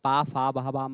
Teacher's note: जब हम पढ़ते हैं प, फ, ब, ब, म कहां आता है? ओष्ठ में।